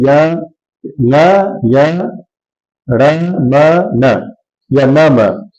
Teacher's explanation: नासिका इनका उच्चारण स्थान है, नाक से बोले जाते हैं, इसलिए इनको कहते हैं नासिका से उच्चारित हुए हुए, और इसको अनुनासिक कह देते हैं।